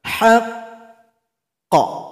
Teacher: huruf qalqalah yang bertasydid, cara berhenti sukun, tunggu 2 detik baru dipantulkan